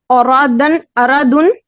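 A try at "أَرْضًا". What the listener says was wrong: نہیں را کو آپ ساکن کریں فتح نہ لگائیں. اردن. نہیں پھر را پہ زبر لگ گئی. اردن.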